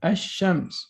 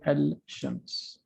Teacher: So what we do is we start with Hamzat Wasl, and we're not going to pronounce the lam, and we go directly to the sheen. We say ash-shams. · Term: sun letter